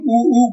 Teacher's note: जब हम उ कहते हैं तो हमारे ओठ गोल हो जाते हैं। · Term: ओष्ठ्य वर्ण